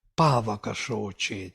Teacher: You see the stress is on the first syllable.